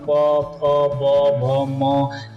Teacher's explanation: पवर्ग का उच्चारण प फ ब भ म ये ओष्ठ से हो रहा है।